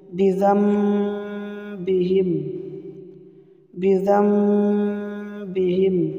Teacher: নুন সাকিনকে মিম দ্বারা পরিবর্তন করিয়া গুন্নাহ করিয়া পড়িতে হবে।